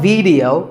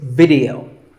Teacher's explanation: both the i and the e are pronounced as short